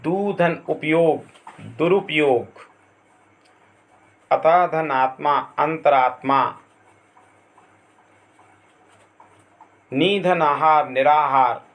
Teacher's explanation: उपरोक्त उदाहरणों में संधि होने के बाद विसर्गों का परिवर्तन या उच्चारण रा के रूप में होता है।